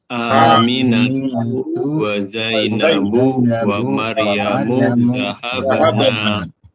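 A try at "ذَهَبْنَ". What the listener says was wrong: Nah, dhahabna, naknya pendek ya. Karena nanti ada yang naknya panjang, artinya kami.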